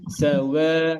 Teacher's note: অধিকাংশ মানুষ সাওয়া ওয়াকে মোটা করে ফেলি ওয়া মোটা হবে না